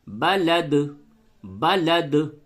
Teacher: تو دال متحرک ہے لیکن جب آپ وقف کریں گے تو پھر دال ساکن ہو جائے گی، تو اب یہاں پہ قلقلہ ہوگا